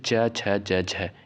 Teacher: च वर्ग के अंतर्गत जितने भी वर्ड आते हैं ये आपके तालू से उच्चारित होने वाले होते हैं